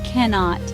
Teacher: Two syllable word. Stress is on first syllable.